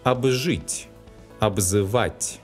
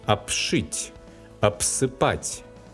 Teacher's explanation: Before the voiceless sounds Ш and С, the letter Б specifies a voiceless sound П.